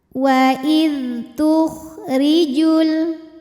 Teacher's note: ra dibunyikan dengan tipis, pangkal lidah datar ya, nyantai lidahnya rileks.